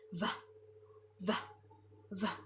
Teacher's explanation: The V itself is a voice sound because there's a vibration in our throat when we say it. V, v, v. So it will be loved, loved, loved.